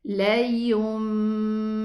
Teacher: Qalb means I'm gonna pronounce the noon as a meme.